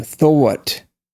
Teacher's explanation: I think it's a diphthong because the W is really not a consonant. It's really more like a vowel